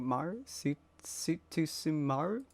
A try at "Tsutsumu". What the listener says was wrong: Tsutsumu. There's no Maru.